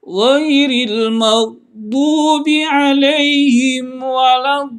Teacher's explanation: Panjangnya adalah membacanya 3 alif atau 6 harkat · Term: mad lazim musaqqal kalimi